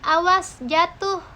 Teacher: ucapan panjang pada silaba terakhir bermaksud mencari perhatian atau penyengatan